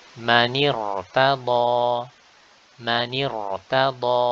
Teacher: Ra sakinah seperti ini, ya, maka dia dibaca tebal meskipun sebelumnya adalah huruf yang berharokat kasrah. Kenapa? Karena kasrah ini bukan kasrah asli, akan tetapi kasrah yang aridah.